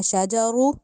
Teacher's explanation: शाजारू में जो रॉ है उसको मोटा करके पढ़ना है, यानी पूर करके पढ़ना है